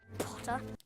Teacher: So it's P-Potter-ta. Potter. No R at the end.